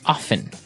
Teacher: they kind of leave out the strong T sound while other people say often right both forms are correct right